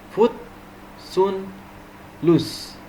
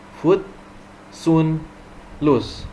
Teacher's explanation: And the lips position are only moderately rounded.